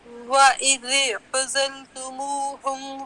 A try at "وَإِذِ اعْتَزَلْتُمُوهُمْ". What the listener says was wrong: وَإِذِ نہیں عین آپ کا موٹا ہو رہا تھوڑا سا. وَإِذِ نہیں ہے وَإِذِ وَإِذِ اور ہونٹ کسرے میں ہونٹ بالکل پیچھے نہیں جائیں گے. وَإِذِ